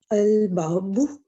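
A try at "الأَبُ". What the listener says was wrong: اب یہاں سے پڑھنا الابو, الابو. اچھا, ہم پتہ کیا غلطی کرتے ہیں, ہم ابو پہ تشدید ڈال دیتے ہیں, با پہ ابو بولتے ہیں, وہ اردو میں ہوتا ہے ابو, ہے نا.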